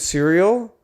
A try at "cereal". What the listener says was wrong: you have a very closed mouth way of saying cereal cereal you said it like cereal cereal like you didn't open your mouth